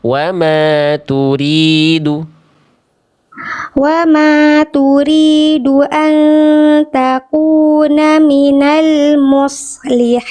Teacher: Shad sukunnya harus jelas desisannya, suaranya ya jangan cuman lewat tadi kayaknya belum termaksimalkan sifat-sifat shadnya tebalnya mengalir suara desis dan nafasnya ya harus jelas.